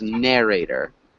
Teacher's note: the first syllable that's emphasized